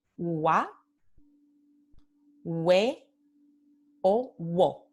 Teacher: En estos tres casos, no, la U es una semivocal.